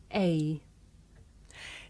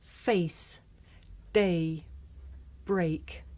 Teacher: this is a diphthong a double vowel sound the shape the mouth makes changes from the beginning of the sounds to the end